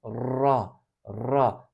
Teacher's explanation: ra harfi arapçadaki tek tekrar harfidir Türkçedeki R gibidir ama tekrar ederek